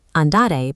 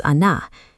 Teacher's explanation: The first linguistic barrier is the truncation rule. In Rome, speakers systematically chop off the final syllables of their words. Standard verbs are compressed for speed.